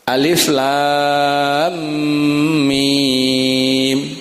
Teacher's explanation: karena ada tanda mad wajib di dalam lam dan mimnya, maka harus dibaca 6 harokat. Alifnya dibaca pendek, alif sebagaimana huruf, lam juga dibaca lam karena berakhiran dengan mim dan ketemu dengan huruf mim berikutnya, maka dibaca idgham mimmi sehingga harus masuk alif lam mim.